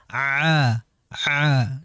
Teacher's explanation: dia keluar lewat sini ya tenggorokan bukan lewat hidung. Alhamdulillahiabbil alamin alamin tidak ada unsur hidung.